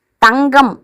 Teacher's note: 2 உயிர்களுக்கு இடையில இருக்கு அப்படின்னா பகல் பார்த்தீங்கன்னா ஹெச் போல ஒலிக்குது அப்படிங்கிறாங்க, 2 எழுத்துக்கு இடையில இருக்கும்போது. மெல்லெழுத்தை அடுத்து வரும்போது தங்கம் அப்படிங்கும்போது இங்குக்கு அடுத்து வரும்போது ஜி போல ஒலிக்குது